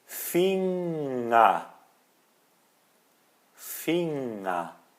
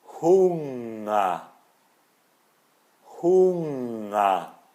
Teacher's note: o ER no final que vira A